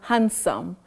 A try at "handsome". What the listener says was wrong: Oh, hand, no. Hand, no. You say hand. That D is not pronounced in that word. You say handsome. Handsome, not hand.